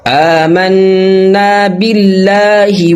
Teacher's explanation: من یقول آمنا باللہ، یہاں پہ جو اللہ کا لام ہے یہاں پہ باریک پڑھیں گے، کیونکہ اللہ سے پہلے جو حرف ہے اس کے نیچے زیر ہے۔